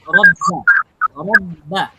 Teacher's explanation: সাকিন আর তাসদিদে যেটা করণীয় সেটা হচ্ছে ধরে রাখতে হবে আপনাকে। সাকিনের চেয়ে তাসদিদে একটু বেশি ধরে রাখতে হবে। কারণ হচ্ছে তাসদিদের উচ্চারণটা যেহেতু এককটা হরফ দুইবার উচ্চারণ হয়।